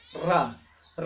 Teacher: रा बोलते समय ये जो जिह्वा होती है, ये जो जिह्वा होती है ये तालु को हल्का टच करती है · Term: लुंठित वर्ण